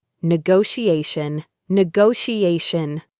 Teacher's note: There are two T's in this word, but they both make a soft esh sound.